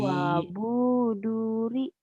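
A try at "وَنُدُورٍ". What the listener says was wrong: Bukan wabu. Ini nun. Wanuduri.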